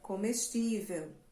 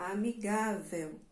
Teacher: têm a mesma terminação ela terminam com a letra L né E esse l no final das palavras têm um som de u mas é um som Brando Suave tá não é um som forte porque não é vogal ele